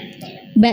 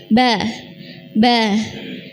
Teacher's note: Ba itu dua bibir ya yang dipertemukan kemudian dibuka. Ba. Ba.